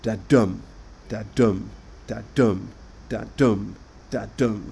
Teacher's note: in each foot, it is the second syllable which is stressed